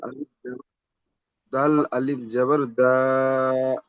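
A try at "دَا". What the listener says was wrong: দাটা 3 আলিফ নয়। হুরুফে মাদ্দার পড়া আপনি 1 আলিফ পরিমাণ টান দেবেন, ঠিক আছে। যখন হুরুফে মাদ্দার পড়া কখন হচ্ছে, এই যে দাল আলিফ জাবার দা, এইটা হচ্ছে হুরুফে মাদ্দা।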